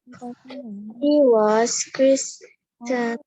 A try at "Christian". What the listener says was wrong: The T is silent. Christian.